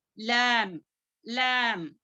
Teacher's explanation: मद लाजिम है वहां पर, इसको 6 हरकत के बराबर खींचना पड़ता है।